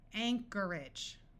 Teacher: notice that the o r takes on a muffled R sound